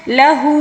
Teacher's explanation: الٹا پیش کو ہم نے 1 الف کے برابر کھینچ کر پڑھنا ہوگا